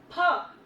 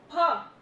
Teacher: ठीक है, और जब हम इस फ को बोलते हैं, बिना नुक्ते वाले फ को बोलेंगे, तब हमारे दोनों लिप्स आपस में मिल करके फिर खुलेंगे